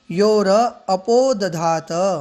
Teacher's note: योह शब्द है तो विसर्ग को र हो जाता है, तो इस प्रकार यहाँ पर बनेगा योर